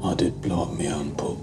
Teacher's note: says, me pub instead of my pub. This change is common in some regions of England, especially in central and northern England.